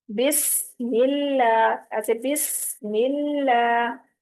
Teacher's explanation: بسم اللہ میں اللہ کا لام باریک پڑھا جائے گا کیونکہ اس سے پیچھے میم کے نیچے زیر ہے